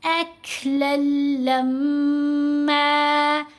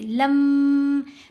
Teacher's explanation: لام کو لام سے ملاتے ہوئے غنہ نہیں کرنا، لام کو میم سے ملاتے ہوئے غنہ کریں گے.